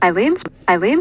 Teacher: the second syllable is stressed in eileen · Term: low plus high star